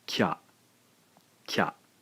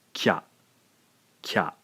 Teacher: the ya sound sort of kicks out the vowel sound from the previous syllable. Therefore, the E sound in ki has been taken over by the ya. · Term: single blended syllable